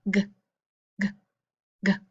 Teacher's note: Do you feel those vibrations? That's right, because g is a voiced sound.